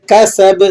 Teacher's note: سین کو باریک پڑھا جائے گا اور با پہ قلقلہ ہوگا۔ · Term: قلقلہ کبیرہ